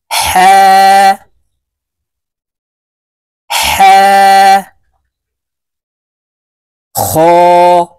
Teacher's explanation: হা হরফ হলকের মধ্যখান থেকে উচ্চারণ হবে কারণ হার মাখরাজ হলকের মধ্যখান থেকে হবে হা খ দাল দাল